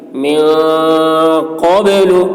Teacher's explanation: رزقنا من قبل نون میں اخفا اور قاف کی آواز موٹی ہوگی، با میں قلقلہ یعنی با کی آواز ڈبل نکلے گی